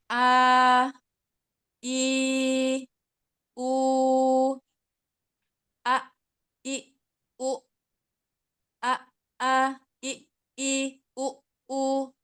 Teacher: hamzah itu makhrajnya ada di aqsal halq ya, di tenggorokan pangkal, tepatnya di pita suara. Ya, di pita suara.